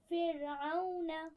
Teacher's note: فرعون میں را کو بالکل باریک پڑھنا ہے ٹھیک ہے، فرعون نہیں پڑھنا بلکہ فرعون پڑھیے اس لفظ کو.